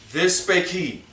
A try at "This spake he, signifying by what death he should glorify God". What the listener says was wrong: No, you read too fast.